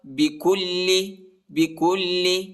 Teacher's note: کاف کو لام کے ساتھ ملائیں گے، بکل، اور لام کو کھینچنا نہیں ہے